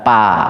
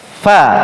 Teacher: Yang betul adalah fa, tidak merapat. Kenapa tidak merapat? Karena ada gigi yang di atas menyentuh perut bibir.